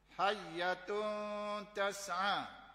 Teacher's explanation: Ini bukan izhar, ini ikhfa, dengung.